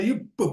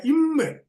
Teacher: இதுல என்றாலும் அதை இரண்டும் ஈருதடுகள், அந்த மாத்திக்கணும், ஈருதடுகள் பொருந்த பிறக்கும் என்றாலும் பகரம் உள்ளிருந்து வரும் வாய்க்காற்றாலும் மகரம் மூக்கு காற்றாலும் பிறக்கும்